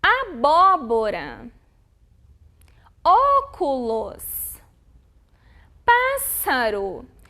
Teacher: São as palavrinhas onde a sílaba tônica é a antepenúltima. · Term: proparoxítonas